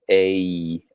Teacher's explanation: in a lot of English accents today, that A sound is kind of a diphthong. It's two vowel sounds